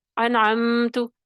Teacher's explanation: انعمت، یہ غلط ہے. انعمت، میم کے اوپر دباؤ پیدا کیے بغیر، غنہ کیے بغیر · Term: عدم غنہ